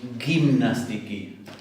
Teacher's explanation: La gama, cuando está delante de un sonido I o de un sonido E, se va a convertir en una semiconsonante aproximante.